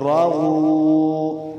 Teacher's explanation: واو ساکن سے پہلے پیش ہے تو یہ واو مدہ ہوگا اور ایک الف مقدار لمبا کریں گے